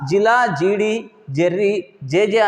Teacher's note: ఇట్లా జిలా, జీడి, జెర్రీ, జేజే అనే పదాలు పలికినప్పుడు మనము ఈ జకారాన్ని మనము తాళవ్యంగా పలుకుతాము. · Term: తాళవ్యాలు